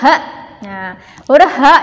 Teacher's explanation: itu keluarnya dari ujung tenggorokan seperti huruf hamzah